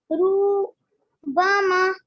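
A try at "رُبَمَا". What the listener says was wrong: पेश को भी लंबा नहीं करते हैं। रूबामा।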